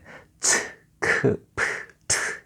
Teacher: 거센 소리, 숨이 거세게 나오는 소리를 말하는데